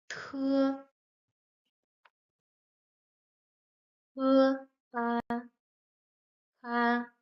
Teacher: T is like the English T, but as it goes with the p sound, it's stronger and it makes some air flow out.